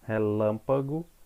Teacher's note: você vai perceber que lã é a sílaba que eu pronunciei com maior intensidade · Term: sílaba tônica